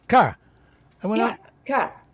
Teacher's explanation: It's just ka. Just don't hold that vowel. Just drop your R, sure, but don't add like 1,000 A's at the end.